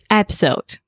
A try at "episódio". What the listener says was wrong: It almost sounds like you're saying episode. So episode. Episode. There are 3 different syllables.